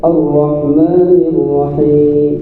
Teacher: Rnya tebal rnya bergetar tapi getarannya satu saja. Bila lebih maka salah dan salahnya jalil. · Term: huruf ra